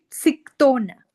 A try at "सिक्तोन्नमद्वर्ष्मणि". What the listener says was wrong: Ik, and it's not just a ta, it is a ik and a ta combined.